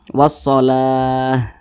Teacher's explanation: apabila berjumpa dengan huruf ta marbutoh, nah, apabila dia berwakaf dan kita sukunkan, maka dirubah menjadi huruf H.